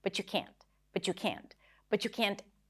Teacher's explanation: So the t and the y connect together and then what you hear is a ch sound.